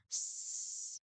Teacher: the letter S sound is voiceless because your throat does not vibrate when you say it